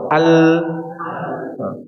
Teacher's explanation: sifat inhiraf atau menyimpangnya suara karena huruf lam ini suaranya mengalir sedikit dari sisi kanan dan sisi kiri lidah, ya. Coba al enggak begitu rapat, enggak rapat sempurna, ya, enggak rapat sempurna.